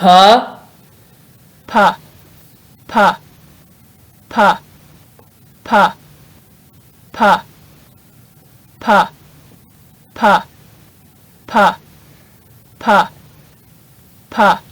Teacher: The sound P is unvoiced, meaning your vocal cords don't vibrate when producing the sound. Your tongue stays in the lower part of your mouth, and your lips press together, then separate when pronouncing the sound P. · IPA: /p/